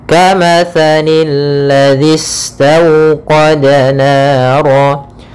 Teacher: Kemudian di sini pada lafal alladzi ada alif lam syamsiyah. Alif lam syamsiyah yaitu alif lam yang ditulis tapi tidak dibaca alif lamnya sehingga langsung ke huruf lam yang ketiga, yaitu lam yang ditasydidkan.